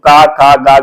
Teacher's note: ये का वर्ग के जो वर्ण है ये कंठ से उच्चारित होते हैं